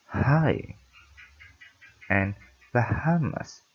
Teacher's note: Say these words and notice how you're not actually breathing or blocking airflow for this sound. You're just exhaling a little bit harder than you would for a normal vowel sound in transition to the following vowel sound.